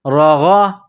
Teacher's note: اوپر زبر ہے، غین کو موٹا کریں گے، انسان جس طرح گلے سے بلغم نکالتا ہے اسی طرح اس غین کو نکالیں گے